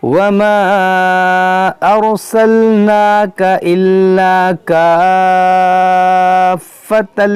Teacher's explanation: یہاں پر مد لازم ہے، الف مدہ کے بعد فا پر سکون اصلی ہے